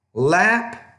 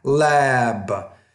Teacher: when the B is at the end of the word, the vowel before it needs to be a little bit longer